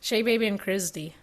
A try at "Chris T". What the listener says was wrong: You said Chris D. No, don't say S. Don't say S or D because there's no D.